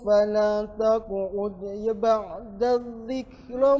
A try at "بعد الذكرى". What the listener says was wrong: بعد الذكرى panjang. فلا تقعد dari فلا تقعد.